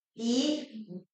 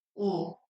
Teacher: 이를 발음할 때는 아랫니 바로 뒤쪽에 혀 끝부분이 와 있다면 우를 발음할 때는 혀가 뒤로 들어가죠